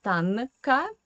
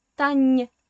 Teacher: you need to know that this N in the middle is soft. So do not say Tanka.